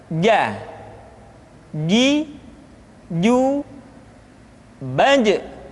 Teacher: huruf ja dikeluarkan dengan menyentuhkan tengah-tengah lidah dengan langit-langit.